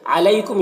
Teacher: علیکم یہاں پر یا لین ہے، اسے نرم آواز کے ساتھ جلد پڑھیں گے. میم میں اظہار شفوی ہو رہا ہے، میم کو جلد پڑھیں گے جیسے ہم تم کی میم کو پڑھتے ہیں.